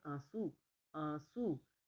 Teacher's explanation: न की ध्वनि अलग से नहीं आ रही है है ना तो ये जो है अनुस्वार की ध्वनि